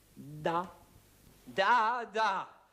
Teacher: La consonne D, par exemple, se prononce en donnant du bout de la langue au-dessus des dents d'en haut. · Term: la consonne des